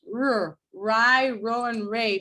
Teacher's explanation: it's made with the tongue tip and the alveolar ridge so this bit of my tongue is approaching this area and · your tongue is doing this kind of curled up movement towards an area that appears to be the alveolar ridge. So we could, in theory, call the R sound alveolar. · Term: retroflex